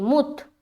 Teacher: मीम को त्वा से मिलाएंगे